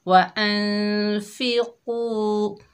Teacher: कौफ रूफ़े मुस्तालिया में से है, मोटा अदा होगा।